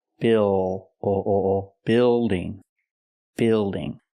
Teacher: Use the short I sound like this is, plus the dark L.